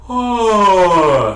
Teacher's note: So if you just think about going, oh, something like that, just simulate doing the beginning of a yawn and then immediately phonate. That high, sort of aristocratic sound is a sound that you produce when you have a very high soft palate.